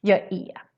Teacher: So är becomes e instead, especially in some regions like Stockholm, for example.